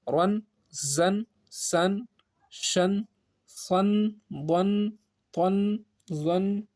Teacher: زبر میں تنوین کی آواز ان کی آتی ہے